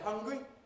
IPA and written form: ˈhʌŋgri (Hungary)